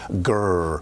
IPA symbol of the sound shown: ɹ